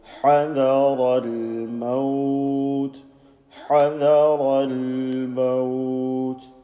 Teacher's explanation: this lam with a sukoon, no vowelizing. Continue the sound until you're ready to say the mo sound of this word maut.